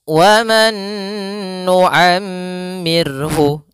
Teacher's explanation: Ra yang dia didahului dengan huruf sukun, maka ra-nya menjadi ra yang tipis, ra tarqiq. Ra tarqiq. Maka waman nu'ammirhu dibaca dengan tipis.